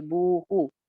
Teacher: بو واو مدہ ہے اور ہو سنگل حرکت ہے، ان کو ایک جیسا نہیں پڑھنا، بو ہو نہیں ہو سکتا، یہ بو ہو.